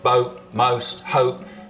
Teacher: the vowel sound in boat, most, hope, starts with the tongue further forwards in the mouth. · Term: goat fronting